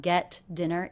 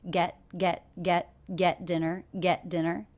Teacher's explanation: the T here is a stop T. I don't release it.